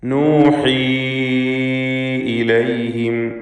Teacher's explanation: യാഇന് മദ് മുൻഫസിൽ ജായിസ് നൽകി 4-5 ഹറക്കത്തിൻ്റെ അളവിലുള്ള ദീർഘം നൽകണം.